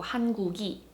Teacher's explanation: the consonant kind of carries over to the next syllable